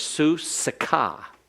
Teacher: Su is an open syllable, and it's a long vowel. So that means the samic with the schwa has to begin the next syllable. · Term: vocal